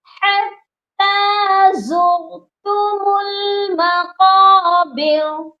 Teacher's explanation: تا کے اوپر ہے کھڑی زبر، اس کو ہم نے ایک الف کے برابر لمبا کر کے پڑھنا ہے